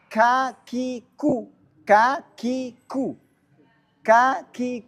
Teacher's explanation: yang biasa-biasanya ka ku itu akan ada nafas yang mengalir itu disebut dengan hams